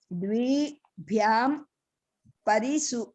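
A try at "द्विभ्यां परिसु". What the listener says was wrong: ద్వి ప్రాతిపదిక కంటే, ద్వి అనే ప్రాతిపదిక కంటే భ్యాం ప్రత్యయం అండి. ద్విభ్యాం పరిసు. ద్వి దీర్ఘం లేదండి, ద్విభ్యాం పరిసు.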